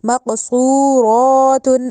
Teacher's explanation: صاد کو پر کر کے موٹا کر کے ادا کرنا ہے